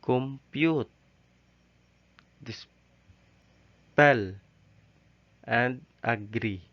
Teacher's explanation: there are 2 syllables. The first of which is unstressed and the second of which is stressed.